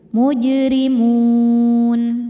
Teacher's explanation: Mad tabi'inya waw sukun didahului harokat dhammah, kemudian huruf yang disukunkannya nun. Maka jika berhenti mimnya ini panjang, boleh 2, boleh 4, boleh 6 harokat, asal konsisten dalam sekali duduk. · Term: mad arid li sukun